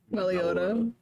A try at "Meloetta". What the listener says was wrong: I mean, close. wrong emphasis on syllables there. It's Meloetta. Like melody.